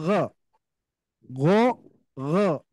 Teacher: bunyi O yang ada di Pangkal lidah bukan bunyi O yang ada di bibir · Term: istila